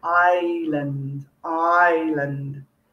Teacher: we do not say iceland even though there's an s written in it we say island island the s is silent